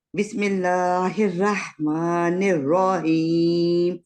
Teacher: आप इसी को पढ़ेंगे प्लीज पहली आयत को बिस्मिल्ला रहमान रहीम रा को मोटा करना है लेकिन खींचना नहीं है